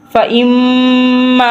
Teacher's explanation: ناک میں سے آواز نکالی ہے، جہاں میم کے اوپر نون کے اوپر تشدید ہو وہاں ہمیشہ گننا ہوتا ہے